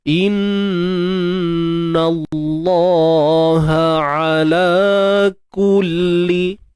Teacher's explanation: Kalimah Allah ni kita baca tebal sebab sebelumnya terdapat huruf yang berbaris atas. Dan kat sini nun bersabdu ni wajibul gunnah lah.